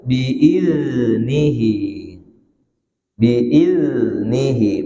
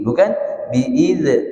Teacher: huruf zal itu juga rokhawah, mengalir suaranya, iznihi biasa, tapi tidak boleh mantul.